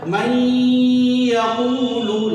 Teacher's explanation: یہاں بھی آواز ناک میں جائے گی. من یقول، من یقول کو کھینچیں گے، واو مدہ ہے. من یقول، لام کو جلدی، زبر زیر پیش کی حرکت کو جلدی.